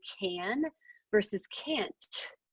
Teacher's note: if I don't hear that T at the end, it's going to sound like you said can